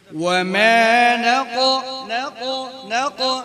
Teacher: অনেকে ঠোঁট গোল হয়ে যাচ্ছে, হ্যাঁ ক হরফটার সময় ঠোঁট কি হবে না, ঠোঁট গোল হবে না।